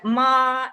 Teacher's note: Ma en el tono alto, en primer tono alto y parejo, se refiere a madre